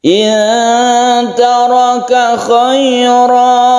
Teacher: Jadi mat ini adalah sebagai pengganti fathaten yang kita wakafkan. Fathaten yang kita wakafkan ini menjadi fathah biasa dan diakhiri dengan alif. Jadi mat iwad itu khusus untuk wakaf. · Apabila kita berhenti maka kita memberhentikannya khaira satu alif karena ini adalah mat iwad.